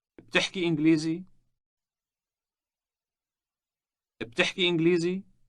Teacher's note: Forming a question in Arabic can be done simply by rising intonation.